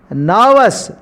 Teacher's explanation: Here the silent letter in this word, given word, R is a silent letter. We should not articulate the particular letter R in this given word. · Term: silent consonant